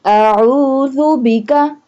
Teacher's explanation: عین حلق کے درمیان والے حصے سے ادا ہوگا